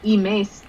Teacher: imes means smell, with the stress on the second syllable